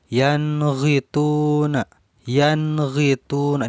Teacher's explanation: kalau pemula belajar tajwid kalau menghadapi huruf go suka ada dengungnya. Ini jangan ya, karena huruf go juga masuk ke dalam huruf idhar